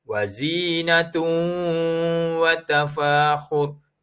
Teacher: Hukumnya idgham ma'al ghunnah. Memasukkan bunyi tanwin ta tadi. Bercampur dengan huruf waw dengan didengungkan sepanjang 2 harakat.